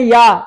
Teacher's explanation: उच्चारण स्थान तालु हो गया